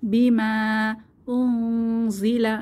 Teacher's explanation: নুন সাকিনের পরে যা ইকফার হরফ এসেছে, তাহলে এখানে গোপন করে গুন্নাহ সহ পড়ব